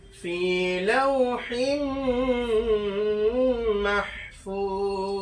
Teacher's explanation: এখানে কলকলা হবে না, শুধু গুণনা হবে এবং মাদ্দে আর একটা টান হবে 3 আলিফ পরিমাণ